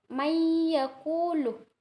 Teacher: Idgham bigunah di sini cara bacanya harus dengung.